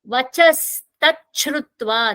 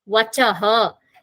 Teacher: When visarga is pronounced with takara in the next word, that visarga will magically become sakara.